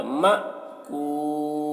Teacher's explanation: ترميهم بحجارة من سجيل فجعلهم كعصف مأكول فجعلهم كعصف، عین کو حلق سدا کریں گے، صاد کو موٹا کر کے پڑھنا ہے، كعصف، میم مشدد ہے، غنہ ہوگا، فیم مأکول، یہاں پر حمزہ ساکنہ ہے، حمزہ ساکنہ کے پڑھنے میں جھٹکا ہوتا ہے